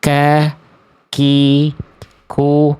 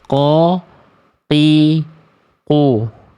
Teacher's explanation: Makhrajnya itu pangkal lidah menyentuh antara langit-langit yang lunak dan langit-langit yang keras. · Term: kaf